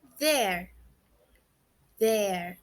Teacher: a gente pronuncia com a língua nos dentes entre os dentes superiores